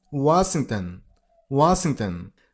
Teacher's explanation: Washington stress on the first syllable. Wing not. It's Washington.